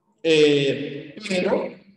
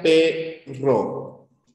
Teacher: Esta es la r ya la vibrante múltiple